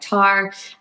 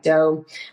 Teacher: A couple of other patterns you might still hear at this age are, one is called velar fronting, and that's where those back sounds like k and g sounds are simplified and brought to the front of the mouth. So for instance, a word like car might sound more like tar, and a word like go might sound more like dough.